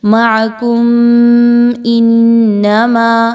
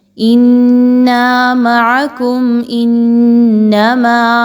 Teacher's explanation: میم ساکن کے بعد حمزہ ہے تو اظہار شفوی ہوگا، ہم نے اس کو غنے کے ساتھ نہیں پڑھنا